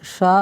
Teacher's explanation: जिनमें से शा हमारा क्या है? अघोष भी है और महाप्राण भी है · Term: श ध्वनि